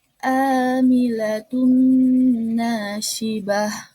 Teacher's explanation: Jadi ada ain bertemu dengan alif, ain fathah bertemu dengan alif, dibacanya itu matobi'i 2 harokat. Amilatun nasibah.